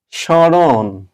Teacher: শব্দের আদিতে ম ফলা থাকলে সেটা উচ্চারিত হয় না তবে নাসিক্য উচ্চারিত হয়